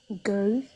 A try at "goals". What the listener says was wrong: Okay, not go but like goals.